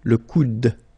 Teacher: you don't insist on this final e, it only gives you the sound of d at the end